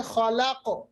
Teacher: काफ साकिन बनने की सूरत में कलकला, कलकला होगा।